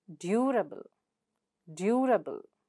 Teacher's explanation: So able comes here, and the syllable that precedes the suffix is due. So you stress on due.